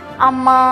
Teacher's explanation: ಕೆಲವೊಮ್ಮೆ ನಾವು ಏನು ಮಾಡ್ತೀವಿ ಮನೆಗೆ ಬಂದಾಗ ಅಮ್ಮ ಅಂತ ಕರೀತೀವಿ ಅಲ್ಲಿ ಏನಾಯ್ತು ಕೊನೆಯದಾಗಿ ನಾವು ಆ ಒಂದು ಅಕ್ಷರವನ್ನ ಎಳೆದ್ವಿ ಅಂದ್ರೆ ಮೂರು ಮಾತ್ರ ಕಲದಲ್ಲಿ ಒಂದು ಮೂರು ಸೆಕೆಂಡ್ ಅದನ್ನ ಹೋಲ್ಡ್ ಮಾಡ್ತೀವಿ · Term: ಪ್ಲುತ ಸ್ವರ